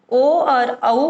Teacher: ओ और औ को कंठ और ओष्ठ दोनों से बोला जाता है। अ प्लस ओ को मिलाकर ओ बना, तो कंठ से अ निकला, ओष्ठ से ओ निकला, तो ओ और औ जो है वो कंठोष्ठ वर्ण हो गए।